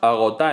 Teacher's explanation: En el primero de los casos, agotá en vez de agotada, eliminar el sonido interdental oclusivo sonoro, el alófono S de la D, eliminar el sonido D, al eliminarlo se quedan dos vocales iguales, por lo que se produce una fusión. Esto hace que cambie el número de sílabas.